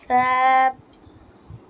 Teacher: সা বলার সময় দুই দাঁতের আগার সাথে লাগবে